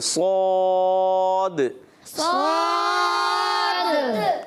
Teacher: صاد کے آخر میں دال میں کلکلا بھی کریں گے